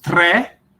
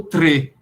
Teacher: Você vai para a Itália, aí você tem, por exemplo, o 3, que pode ser pronunciado tre, aberto, ou tre, fechado. Dependendo do lugar, você vai ter variação.